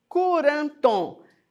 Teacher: Porque o K é um som posterior, então coloca a vogal U.